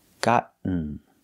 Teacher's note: Make the stop T and fall to the N sound.